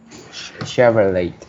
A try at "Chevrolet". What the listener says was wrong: So Chevrolet, there is no T sound. Rather, it's only Chevrolet, or it's also known as Chevy. Chevy.